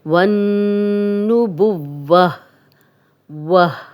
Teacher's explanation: वन्नुबुव्वत, वन्नुबुव्वत, और अगर हम यहाँ पे स्टॉप करेंगे तो गोल ता हमेशा हा में बदल जाती है अगर हम वक्फ करते हैं। वन्नुबुव्वह, वह, हा की आवाज़ आएगी।